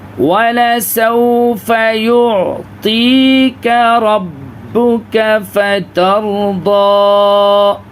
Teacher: وَلَسَوْفَ یہاں پہ عین میں آواز بالکل ہلے گی نہیں، کیونکہ یہ قلقلہ والے حروف نہیں ہیں